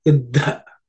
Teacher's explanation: There are two dhas coming. The first one is simple dha. The second one is an aspirated one, the fourth letter in the third varga.